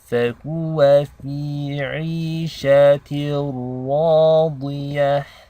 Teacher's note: this ra is heavy because it takes a fatha